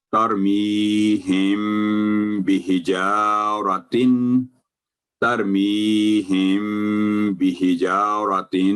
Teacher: میم ساکن کے بعد جب بھی با ہوگا تو ہمیشہ یہ یہاں میم پر اخفاء ہوگا